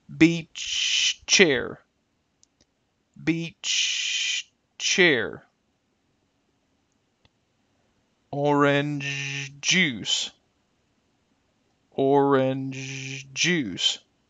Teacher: we will often hold on to the previous consonant and then finish the sound at the beginning of the next word · Now, in the examples on the right, again, notice how we kind of hold the sound before we finish it on the next word